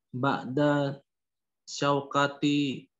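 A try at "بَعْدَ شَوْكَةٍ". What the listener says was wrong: Tanwinkan aja kan tidak ada alifan. Ba'da syaukatin.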